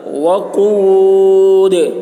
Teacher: قاف کی آواز موٹی ہوگی اور دال میں قلقلہ